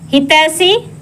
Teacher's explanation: इसमें स मूर्धन्य स होता है